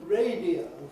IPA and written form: ˈreɪdiəʊ (radio)